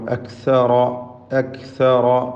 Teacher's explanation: ഇതിൽ റായിന് മാത്രമാണ് തഫ്ഖീം എന്നത് ശ്രദ്ധിക്കുക.